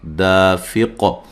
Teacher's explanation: قاف پہ قلقلہ واضح کرنا ہے وقف کی صورت میں